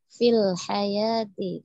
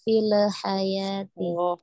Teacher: lamnya jangan dipantulkan ya